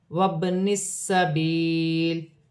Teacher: با ساکن ہے، حرف قلقلہ میں سے ہے، قلقلہ کے ساتھ ادا کیا جائے گا